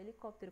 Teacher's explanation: a gente percebe que a sílaba mais forte é o cop, cop